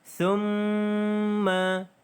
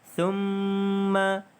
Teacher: Alright, di sini kita ada hukum tajwid iaitu mim yang ada tanda syaddah. Maka di sini kita dengung dengan kadar 2 harakat. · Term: wajibul gunnah